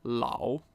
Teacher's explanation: third tone followed by first tone La meaning old